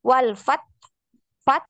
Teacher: hurufnya Ta ini ditahan suaranya yang ngalir itu nafas walfat fat gitu fat fat Nah ada tetap ada aliran nafas